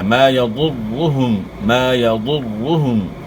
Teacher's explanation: ضاد موٹے حروف میں سے ضاد کو آپ نے موٹا ادا کرنا ہے، اور را کے اوپر شد کو خوب جماؤں کے ساتھ ادا کرنا ہے، اور را کو اپنے موٹا پڑھنا ہے.